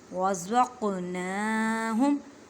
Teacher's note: क़ौफ़ पर कलकला करें क्योंकि क़ौफ़ साकिन है, हरूफ़ कलकला में से है